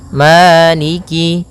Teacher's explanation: Pada bacaan maliki di lafal ma ada hukum tajwid berupa mad tabi'i, yaitu adanya fathah bertemu dengan alif, panjangnya 2 harokat, maliki. Kemudian kaf di sini ada huruf kasrahnya, maka sempurnakan kafnya, jangan seakan-akan diputus.